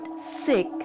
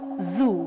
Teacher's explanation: Here, the main articulators involved are tip of the tongue and the front teeth. S as in word sick and Z as in word zoo are alveolar fricatives. The tip and the blade of the tongue is brought very near to the teeth ridge.